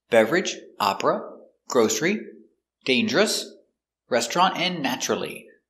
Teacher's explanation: some words that have a silent syllable we're going to practice the American pronunciation of these words with a silent syllable in the middle